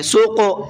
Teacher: قاف کے اندر قلقلہ کریں گے